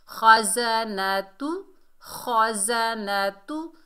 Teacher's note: خا حروف استعلا میں سے ہے، موٹا ادا ہوگا، زا سختی اور سیٹی سے ادا ہوگا